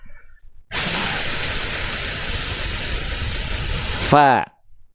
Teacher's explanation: Alirkan nafas huruf fa, kita akan dengar suaranya ikut mengalir. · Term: mengalir nafas